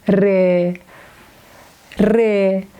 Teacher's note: Re is exactly the same sound with R in English, but we pronounce re with more pressure.